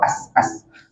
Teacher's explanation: Makhraj huruf sin hujung lidah belakang gigi bawah. Dan untuk bagi nipis, pastikan keseluruhan lidah kita memang betul-betul berada di bawah.